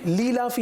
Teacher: اور لی لافی, اب اس میں دو بڑی غلطی کر دی کہ ایک تو حمزہ کی ادائیگی بھی صحیح نہیں کی اور دوسرا یا مدہ کو بھی چھوڑ دیا